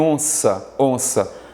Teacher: parte o som sai pelo nariz · esse N, mas não é um som, não é um fonema. Ele, na verdade, indica a nasal do O. Quer dizer que parte do som sai pela sua boca, parte do som sai pelo nariz